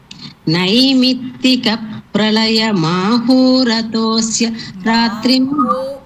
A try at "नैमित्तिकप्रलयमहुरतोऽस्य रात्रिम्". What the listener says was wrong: It is not ho. again I think you are saying maho. It is not maho. It is Mahu. Because it is Naimittika Pralayam. Ahu means rain. Ahu. So Ahur Ratosya Ratrim.